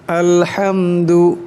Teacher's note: এখানে হা বড় হা, তাই আওয়াজটা গলা থেকে আনতে হবে।